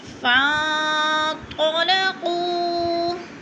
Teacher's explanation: فن پہ اکفا ہو رہا ہے، غنہ کرنا ہے، ناک میں آواز لے جانی ہے۔ قو کو تھوڑا سا کھینچ کر پڑھنا ہے، وہ مدہ ہے۔